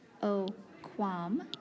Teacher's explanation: So we do not have a double vowel here, we just have a consonant and the single vowel A. But this A becomes long because the M and the T after it are consonants.